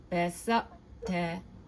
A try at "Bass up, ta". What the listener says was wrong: That was pretty good. Feel the back of the tongue elevate a little bit better. Bass out.